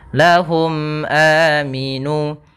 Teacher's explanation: mim mati bertemu Hamzah maka dinamakan dengan izhar syafawi yaitu suara mimnya harus jelas dan tidak boleh ditahan panjang E maaf tidak ada panjangnya dan · suara mimnya harus jelas dan tidak boleh ditahan. Tidak ada panjangnya dan tidak ada gunnahnya.